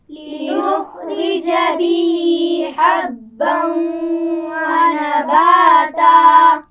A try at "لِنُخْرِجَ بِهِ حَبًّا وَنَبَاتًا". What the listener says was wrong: لِنُخْرِجَ خا کو موٹا پڑا جائے گا، را کے نیچے زیر ہے تو اس کو کیسے پڑھتے ہیں؟ لِنُخْرِجَ بھی ہاں کے نیچے کھڑا زیر ہے، اس کو کھینچ کر پڑھا جائے گا.